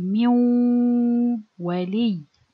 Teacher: No, I change or I merge the noon into waw sakin, like this. And with this waw sakin, I apply ghunna. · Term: idgham naqis